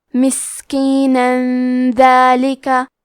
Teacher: دال حروف الاخفاء میں سے ہے تو ہم یہ حکم کو غنہ کے ساتھ ادا کریں گے